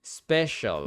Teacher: These sounds come together to form a sh sound, and we really reduce that final vowel to the point where you really only hear the dark L sound.